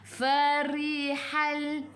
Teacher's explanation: Farihal, fa fi fu gigi atas menyentuh perut bibir bawah. Farihal, ri senyum, ra baris bawah baca dengan nipis.